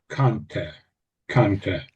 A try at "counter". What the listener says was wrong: Yeah, yeah.